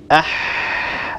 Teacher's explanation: لاحظوا كيف أن الصوت يجري، أستطيع أن أجري صوت الحاء. الحاء هي حرف مستفل، لأن الصوت لا يتصعد عند النطق بها إلى قبة الحنك. · الحاء هي حرف مستفل، لأن الصوت لا يتصعد عند النطق بها إلى قبة الحنك. حينما أنطق الحاء ساكنة سيكون اللسان في وضع الراحة، لا يرتفع أقصى اللسان، وبالتالي لا يتضيق الحلق، وبالتالي لا يتجه الصوت إلى قبة الحنك، إنما يتسفل الصوت ويخرج إلى خارج الفم. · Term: حرف رخو